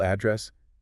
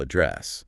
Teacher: If you stress the first syllable address, it's a location, a physical spot. But if you stress the second syllable address, it's a verb, meaning to speak to someone or to deal with a problem.